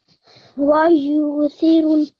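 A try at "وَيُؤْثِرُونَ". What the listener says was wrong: So this, because we've got the sukoon on the hamza, we're just going to have a slight jerk on there. Wa yu'thiruna.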